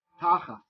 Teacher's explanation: And that's because in Ashkenazi Jewish pronunciation, the way we read the Hebrew, this word is tachas. Whenever you have a tav without a dagesh, we pronounce it like an S.